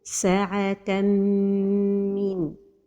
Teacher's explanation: the right pronunciation is with a time for the ghunna and without pronouncing noon